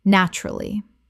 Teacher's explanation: Delivered flatly about a bad outcome, it confirms that the speaker is not surprised and was perhaps grimly anticipating this moment all along.